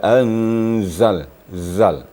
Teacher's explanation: ada sifat safirnya desisnya lebih kuat lagi caranya dirapatkan gigi kita